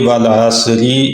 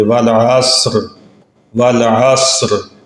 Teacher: اب اگر ہم یہاں پہ ملانا چاہیں گے تو پھر را کے نیچے زیر ہے، اس کو باریک پڑھا جائے گا، اور اگر رکنا چاہیں تو را ساکن ہو جائے گی۔